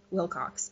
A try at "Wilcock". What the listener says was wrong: Wilcock, not Cox. I hate it when people mispronounce my name, so I want to point that